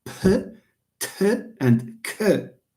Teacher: you pronounce voiceless stops like p, t, k. You pronounce them with an extra puff of air. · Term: aspiration